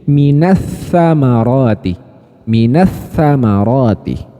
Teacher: Biasanya pada mushaf Indonesia sudah pasti ada tasydidnya di sini ya Jadi dimasukkan kan lamnya ini lam sukunnya diabaikan Oke ini diabaikan Minal tsamaroti menjadi minatamaroti minatamaroti Oke tib jadi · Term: Idgham Syamsiah